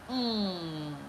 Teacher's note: The voiced velar nasal, mm. That ugly-looking n.